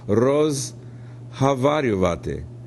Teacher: assuming that that unstressed Oh sounds like ah